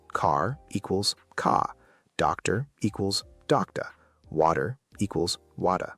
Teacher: In British English, especially what they call received pronunciation, or RP, the R at the end of words is often silent.